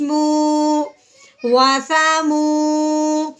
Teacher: واؤ ساکن سے پہلے جب پیش آ جائے تو ہم نے اسے ایک الف کے برابر لمبا کرنا ہے۔ اب ہم نے میم کو لمبا کر کے پڑھنا ہے واؤ ساکن سے پہلے پیش آنے کی وجہ سے، تو کیسے کریں گے، میم واؤ پیش مو، واسامو۔